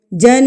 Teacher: آپ نے نون کی آواز کو ناک میں روک کے رکھنا ہے، اس کو غنہ کرنا کہتے ہیں۔ جن، ناک میں رک گئی، جن، اس کو غنہ کرنا کہتے ہیں۔